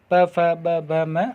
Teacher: ओठों से बोले जाने वाले जो वर्ण होंगे वो आपके ओष्ठ वर्ण कहलाएंगे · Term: ओष्ठ्य वर्ण